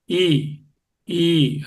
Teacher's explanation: ఈ ఈ అన్నప్పుడు నాలుక కొంచెం మీదకి లేచి ఆ అంగుడు టచ్ అవుతుందా అన్నట్టు ఉంది. ఆ అని గొంతులోంచి రావడంలే. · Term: తాళవ్యం